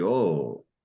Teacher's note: A circumflex here, you'd go up and down. So this would be oh.